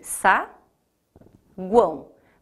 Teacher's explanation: Lá em guão eu terei 3 vogais, o U, o A e o O. Quem será a vogal? O A. O U e o O terão papéis de semivogais. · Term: tritongo